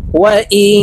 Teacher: এই নুনকে নাকের ভিতরে লুকাইয়া গুন্নার সহিত পড়ব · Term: ইকফা গুন্না